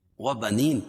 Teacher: یا ساکن سے پہلے زیر ہو تو یا مدہ اس کو ایک الف کے برابر کھینچ کے پڑھیں گے